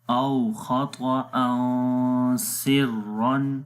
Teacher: را کو موٹا پڑھیں گے، را کے اوپر دو زبر ہے